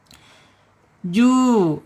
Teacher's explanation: Aljaub dari tenggorokan lari terus ke mulut ya. Tidak boleh lewat hidung · Sudah ya, na ini ada di alisan, ujung lidah menyentuh langit-langit atas depannya ya. Kemudian ada di tawasud, ada di al-idlaq, ada di gunnah.